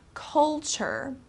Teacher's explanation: this T-U-R-E becomes kind of like a ch sound